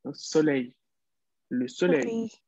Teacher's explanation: aquí la L final y la I hacen este sonido Y